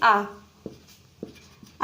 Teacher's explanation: पहला है विवृत स्वर, मतलब जैसे हमारा मुख खुलता हो, जैसे कि आ जब हम उच्चारण करते हैं आ वर्ण का, तब हमारा मुख पूरा खुलता है, तो ये हुआ हमारा विवित्र स्वर।